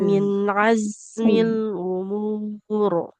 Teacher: Az kalau kalau huruf z ini rakhwah beda. Untuk huruf zai ini mengalirnya lebih e lebih lama daripada huruf nun min azmil umur.